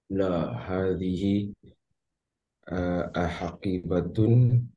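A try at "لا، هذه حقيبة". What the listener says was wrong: Enggak pakai ah. La hadhihi hakibatun.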